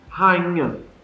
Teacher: Se falar rápido aqui, você não fala o I.